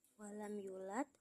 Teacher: mad tabi'i pada lafaz yu karena huruf waw sukun didahului domah, dibaca panjang dua harokat. Nah, yulad di akhir ayat, hukum tajwidnya adalah qalqalah kubro karena huruf dal di akhir ayat sukun karena waqaf, pantulannya kuat.